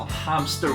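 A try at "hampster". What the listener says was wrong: Hamster with a P. You gotta pronounce that.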